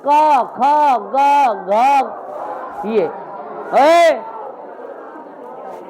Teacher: ये जो कवर्ग है ना ये कंठ से निकलता है।